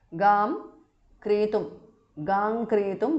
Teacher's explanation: because of sandhi anuswara changes to ngada